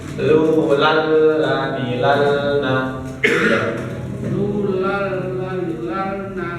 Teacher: Nah, jadi tadi di lal lali lubal lu lal lani nunnya kita tidak baca langsung, misalnya langsung mempraktekkan ilmu tajwidnya ya. Jadi nunnya seolah-olah nggak kebaca Pak, langsung ke lam berikutnya langsung masuk.